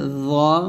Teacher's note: এটা হচ্ছে জ, জিব্বার আগা উপর তাদের আগায় লাগবে জ মোটা করে। এটা জাল, পাতলা, জিব্বা একই মাখাস, তবে জাল পাতলা, জ মোটা।